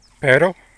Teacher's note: So basically the front of the tongue is going to tap the alvola ridge a single time basically only once. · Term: Spanish tapped R